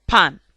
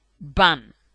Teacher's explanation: P. Voiceless bilabial plosive. Pan. B. Voiced bilabial plosive. Ban.